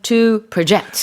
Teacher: the verb form the to project the intonation being on the second syllable